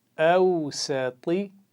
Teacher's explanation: اگلا لفظ پڑھیں گے اوسطی. جی اس میں طا کی آواز موٹی پڑھنی ہے آخر میں، اس سے پہلے کوئی آواز اس لفظ میں موٹی نہیں پڑھی جائے گی. سین ہے، اس سے پہلے واؤ لین ہے اور وہ حمزہ کی آواز اس کے ساتھ مل رہی ہے، تو یہ موٹی نہیں پڑھی جاتی.